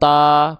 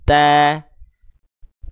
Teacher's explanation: Menipiskan vokal A-nya. Buka mulut sedikit senyum. Buka mulutnya jangan bukan cuman ta, bukan hanya asal ta, tapi ta, tipiskan pelafalannya.